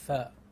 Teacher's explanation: the moment I say ph, both my lips are coming together. Ph, which is not the correct sound.